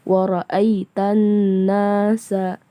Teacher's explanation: Ayat kedua, wa ra'aita, di sini ada huruf alif lam syamsiyah, bacanya wa ra'aitanna, setelah huruf na ada huruf alif mad tabi'i, bacanya 2 harakat.